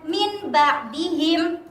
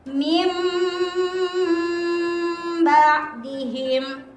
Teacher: Hai cara membaca membalik bunyi nun sukun atau tanwin menjadi Meme dengan sedikit merenggangkan kedua bibir disertai mendengung dan ditahan selama satu setengah Alif atau tiga harokat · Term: iqlab